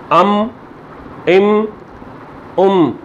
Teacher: मीम है जब साकिन होता है तो इसका जो आवाज़ है ये हल्की सी नाक से आती है, इसको हम कहते हैं इदगाम नाकिस।